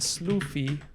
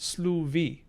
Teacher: we have allophonic voicing of fricatives in between vowels just like old english um cool cool cool optima is mountain absolutely it is